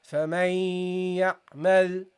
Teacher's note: you don't pronounce the part of the noon that's produced from the mouth area, but the part which is produced in the nasal area